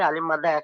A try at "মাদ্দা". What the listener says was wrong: এখানে আপনি বলেছেন, সুন্দর বলেছেন, কিন্তু মাদ্দাকে আপনি মাদ্রা বলছেন, মাদ্রা, মাদ্রা হবে না, মাদ্দা, বুঝতে পেরেছেন? হ্যাঁ মাদ্রা বললে শুনতে কেমন একটা লাগছে, বুঝতে পেরেছেন? মাদ্দা, একদম একটু সহি করে